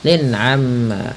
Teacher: Lin amma jelas suara tanwinnya karena dia izhar halqi.